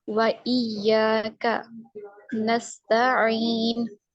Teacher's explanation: یا ساکن ہے، یا ساکن سے پہلے زیر ہے تو اس لیے اس کو ہم یا مدہ کہیں گے اور اس کو 2 کاؤنٹس اسٹریچ کریں گے